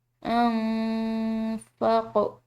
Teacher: نون ساکن ہے، اس کے بعد فا ہے جو کہ حروف اخفا کا ایک حرف ہے، تو اس کو ہم مخفی کر کے پڑھیں گے۔ انفاق، قوف حروف قلقلہ میں سے اس کو ہلاتے ہوئے ادا کیا جائے گا۔